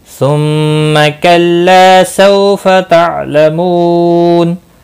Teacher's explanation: सुम्मा मीम मुशद्दद पर गुन्ना होगा, ला अलिफ मद्दा है, सौ वाउलीन है, आइन साकिन को हिलाना नहीं।